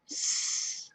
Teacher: If we make the S sound, our throat does not vibrate. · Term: unvoiced